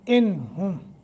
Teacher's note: لو یہ حرف مدہ وہ ساکن ما قبل ضمہ ہے. انہم، نون ساکن کے بعد ہا حروف حلقی میں سے ہے، لمبا نہیں کریں گے، اظہار کریں گے